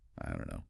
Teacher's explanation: It's called elision. And the vowel sound in don't, the O sound, often weakens, maybe becomes a bit shorter or less distinct, especially when spoken quickly. · the t is gone the vowel might be different and don't and no link seamlessly together